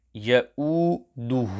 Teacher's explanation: Ha must be sufficiently lengthened due to dhammah maqlubah, upside down dhammah.